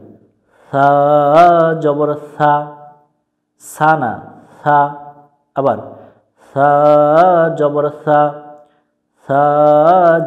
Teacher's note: আমরা জিহ্বার আগা থেকে নরম করে পড়বো